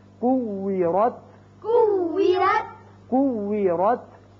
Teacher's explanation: ہونٹ گول رہے ہیں واو پر